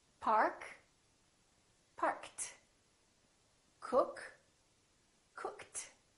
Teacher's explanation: P is a voiceless consonant. If the last letter of the verb is a voiceless consonant, the ED becomes a T.